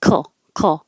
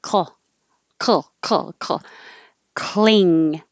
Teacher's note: Cling, the C sounds like a K, and you can make the back of your tongue make your K sound while the front of your tongue is in the L position